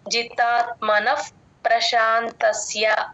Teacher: జితాత్మన నా పక్కన ఉన్న విసర్గ ఎఫ్ సౌండ్ అండి ప ముందు విసర్గ ఇంకా ఎప్పుడు వచ్చినా సరే ఎఫ్ సౌండ్ చెప్తాం జితాత్మనః ప్రశాంతస్య ఆ స కింద య వత్తు కూడా క్లియర్ గా వినపడేటట్టు